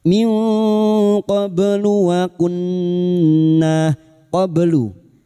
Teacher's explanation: Nun sukun dibaca samar dan mendengung selama tiga harakat. Minqoblu waunna qoblu qoblu ba sukun yang mati asli di tengah kalimat qalqalah sugro. · ba sukun yang mati asli di tengah kalimat qalqalah sugro. Jangan lupa dipantulkan. Qlu waunna nun yang bertasdid gunna musyadadah kita dengungkan selama tiga harakat. · nun sukun bertemu kaf ikhfa hakiki, nun sukun dibaca samar dan mendengung selama 3 harokat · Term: ikfa hakiki